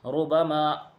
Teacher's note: اس میں بھی را کو پر پڑھا جائے گا کیونکہ را کے اوپر پیش کی حرکت ہے۔